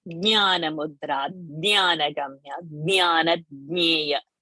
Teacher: So you have to use the soft palate. The base of the tongue should touch the soft palate to produce the sound nya.